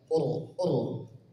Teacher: ro sukun sebelumnya damah Tebal juga